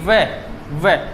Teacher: जब हम व का उच्चारण करते हैं तो नीचे वाला होठ ऊपर वाले दांतों को क्या करता है? स्पर्श करता है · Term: दंतोष्ठ